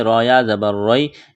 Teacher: یا ساکن سے پہلے زبر ہے، حروف لین یا ہے، اس کو کھینچنا نہیں ہے